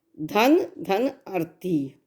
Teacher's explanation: धन के नाम में ह्रस्व आ है और अर्थी के आ में भी ह्रस्व आ है।